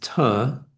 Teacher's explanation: it's actually pronounced with the T behind the upper teeth, which is different from English T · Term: dental